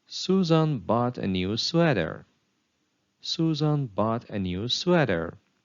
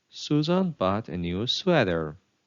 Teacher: the rising falling intonation pattern it is sometimes known as a falling intonation